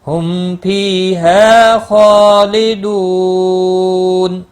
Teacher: 3 سے 5 الف کے برابر کھینچ کر وقف کریں گے، مد العارض وقفی ہوگا